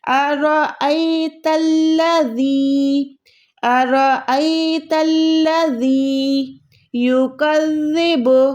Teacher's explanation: ज़बान को थोड़ा ऊपर वाले दो दांतों से टच करके ज़बान को थोड़ा सा बाहर निकालेंगे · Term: जाल